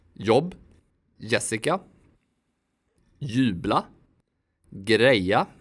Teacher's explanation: This letter sounds like y. It's not j like in English. Swedes even use the y sound in their loans from English. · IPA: [j]